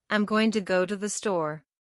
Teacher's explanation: In practice, your ear will clearly pick up going and store. but the small connecting words to and the become fleeting barely audible ghosts between the pillars of meaning